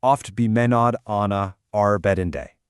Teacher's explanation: There's that sharp pause right in the middle, that's your caesura, and the O and A sounds in the first half, they link perfectly across that structural pause to the A sounds in the second half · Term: alliteration